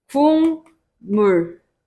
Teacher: 뒤에 있는 비음이 앞에 있는 평파열음에다가 영향을 주는 것이다